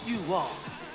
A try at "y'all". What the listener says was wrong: It ain't you all, it's y'all.